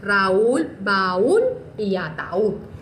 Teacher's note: la A está primero y luego va la U, pero que estas no quedaron en la misma sílaba, o sea, quedó una al ladito de la otra, pero en sílabas diferentes, y que la U se encuentra tildada porque es una vocal cerrada. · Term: hiato